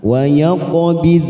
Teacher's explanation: Qaf sukun qalqalah sugro kita pantulkan